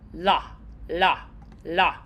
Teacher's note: the L, a nice sharp, quick flick.